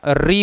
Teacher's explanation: री बोल कर के देखिए एक विशेष प्रकार का वाइब्रेशन आता है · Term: मुर्धा